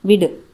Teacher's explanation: விடு அப்படிங்கிறது முழுமையாக ஒலிக்கிறது எனவே இது ஒரு மாத்திரை அளவுக்கு இருக்கறதுனால இது முற்றியல் உகரம்.